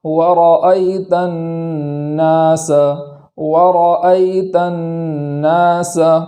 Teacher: نون تک اس گنہ کی حد رہے، اور جب الف ادا کرنے جائیں تو گنہ نہ ہو